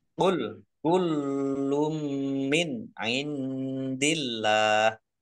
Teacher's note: Nun sukun bertemu dengan huruf ain, bacaan idhar dibaca jelas. · Lamnya dibaca double, ada tasdidnya. Domah tanwin bertemu dengan huruf mim, idgham bi gunah, masuk dengan mendengung, yaitu mendengung mim · Nun sukun bertemu dengan huruf dal, bacaan ikhfa dibaca samar-samar. Allahnya dibaca tipis karena harokat di depannya kasroh.